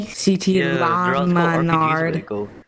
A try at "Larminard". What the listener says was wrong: Where'd you get the D? You said Larminard.